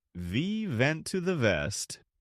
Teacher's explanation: It maps the English W onto the Farsy V.